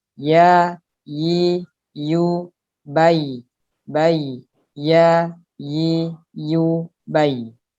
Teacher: Ya juga di tengah-tengah lidah tapi ya sedikit renggang daripada shin karena ya lebih lentur.